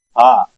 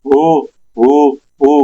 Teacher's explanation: ہا پیش ہو، ہا ادا ہو رہا ہے لیکن جب آواز باہر آ رہی تھی تو میں نے ہونٹ گول کیے بس، اور کچھ میں نے چینج نہیں کیا. یہ ہا کی آواز ہے ہا، لیکن پیش لگا ہوا ہے ہونٹ گول ہو جائیں گے تو ہو بن جائے گا